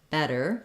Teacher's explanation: Double T in better makes a flap sound